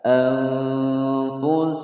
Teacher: nun mati bertemu fa, hukum bacaan ikhfa, disamarkan dan didengungkan selama 2 ketukan. Anfusakum, pendek semua ya.